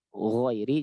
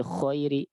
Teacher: pembeda antara ghain dan kho hanya di sifat apa? Di sifat jahar atau hamas saja